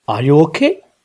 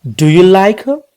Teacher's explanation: ఓకే ఓకే, rising intonation క్వశ్చన్స్లో ఎలా యూస్ చేస్తామో just చూద్దాం. ఎస్ఆర్ నో క్వశ్చన్స్కి ఖచ్చితంగా మనం రైజింగ్ ఇంటోనేషనే వాడాలి.